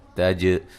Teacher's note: تا کو باریک جیم پہ قلقلہ